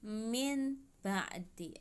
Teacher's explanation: nun sukun nya diganti dengan huruf mim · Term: iqlab